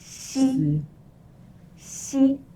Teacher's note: it's somewhere in between the S sound and the SH sound in Chinese but a bit closer to the SH sound